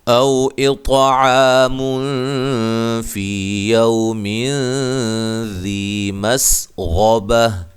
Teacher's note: اطع کو موٹا بھی اور قلقلہ بھی